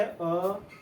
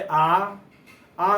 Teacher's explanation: पहले कहे अ बहुत आराम से बोलिए, फिर कहे आ में दुगुना समय लगा